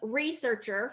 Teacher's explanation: researcher first syllable stress